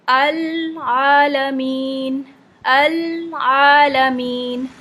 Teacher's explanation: हो जाता है कि पिछले वाला हर्फ हिल जाता है तो आपने बहुत ही स्मूथ ट्रांजिशन करनी है लाम से आइन पे कि लाम नहीं हिले